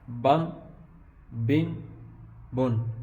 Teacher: جب نون ادا ہوتا ہے، جو ساؤنڈ ادا ہوتی ہے، جو اس کو جنبش کہتے ہیں یا حرکت کہتے ہیں، یہ ساؤنڈ آپ نے پیدا نہیں کرنی